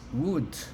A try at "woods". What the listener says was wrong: Okay, it sounds like a Z on the end part. Okay, woods.